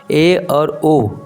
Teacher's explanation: वाकई में ए और ओ बोलने से हमारा मुख जो है आधा बंद होता है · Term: अर्ध संवृत